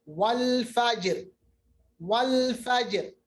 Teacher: और आखिरी हालत जब रा मकसूरा हो, यानी रा पे जेर हो, जिस पर राउम के साथ वक्फ किया जाए, जैसे वल फजर, यहाँ पे भी रा बारीक होगा